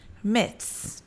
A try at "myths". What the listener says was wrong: And then add an S. Myths.